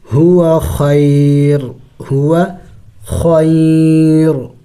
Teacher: وقف میں را کو ساکن کر دیں گے